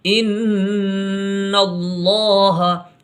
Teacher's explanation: یہاں نون میں غنہ ہوگا، غنہ کہتے ہیں گنگنا کر کے پڑھنا۔ ان اللہ، یہاں پر اللہ کا لام پر ہوگا، کیونکہ لفظ اللہ کے لام سے پہلے حرف یعنی نون کے اوپر زبر آیا ہوا ہے، تو یہ لام پر ہوگا، یعنی موٹی آواز میں پڑھا جائے گا۔